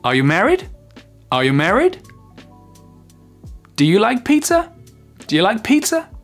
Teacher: Ici, l'intonation monte dans les questions fermées.